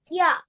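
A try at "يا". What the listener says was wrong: Stretch it little bit.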